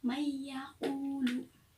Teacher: Contohnya tadi dibacanya mendengung ya, mayyaqulu. Jadi nunnya itu melebur mengikuti huruf depannya, mengikuti ianya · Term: idgham bihunah